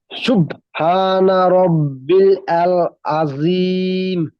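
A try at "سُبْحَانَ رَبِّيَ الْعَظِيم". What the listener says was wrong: সুপটা একটু বেশি চাপ দেওয়া হয়ে যাচ্ছে, সুবহানা। একটু হালকা ভাবে। রব্বিয়াল, রব্বিয়াল।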